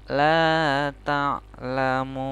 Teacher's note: Ini adalah ta'lamun, munnya ini panjang ya kan. Kemudian nunnya menjadi sukun. Ini adalah hukum bacaan mad arid li sukun.